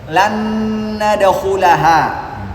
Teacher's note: Karena nun punya dengung, nun yang berikutnya juga punya dengung. Maka sempurna dengungnya karena sama-sama punya sifat dengung.